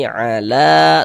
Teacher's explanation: Pertama di sini ala, la dibaca panjang. Ini namanya adalah mad jaiz munfasil.